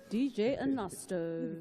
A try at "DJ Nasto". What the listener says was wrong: DJ Nasto. Not a Nasto.